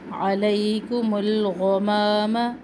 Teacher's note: اب غائن کو پر کر کے پڑھنا ہے, منہ بھر کے ادا کرنا ہے